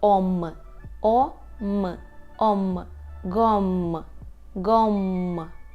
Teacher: нас Ось ця а з хвостиком правда але запам'ятовуємо правило що коли а з хвостиком а далі іде буква б або буква П так б п то ми тоді цю букву вимовляємо як ом